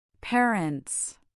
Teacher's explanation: parents has the stress on the first syllable